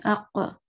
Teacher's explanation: اق ذرا زور سے کرنا ہے تاکہ سننے والے کو پتہ چلے کہ یہاں پہ دو قاف تھے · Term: نبر